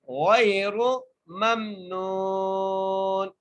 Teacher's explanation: اجر غیر، غین کو یا سے ملائیں گے اور را کے اوپر پیش ہے، میم کو میم سے ملائیں گے اور نون کو ایک الف مقدار کھینچ کے پڑھیں گے اور اگلے نون کو وقف کی صورت میں ساکن کر دیں گے